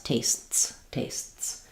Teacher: there's a tiny little stop and then this T is very short and goes right into into the S